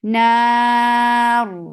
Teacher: Because of this waqf, you are giving sukoon on ra, and now ra will get tawassut, and ra will be heavy because there is fatha before sakin ra. Na, and this temporary sukoon has turned this 2 counts long vowel into 4 counts. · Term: gunna